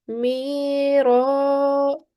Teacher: So it's a rule of alif mad. And we stretch the sound out for 2 seconds. So we say mi ra.